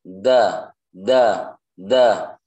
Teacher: dal ini keluarnya dari ujung lidah dan gigi seri atas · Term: huruf dal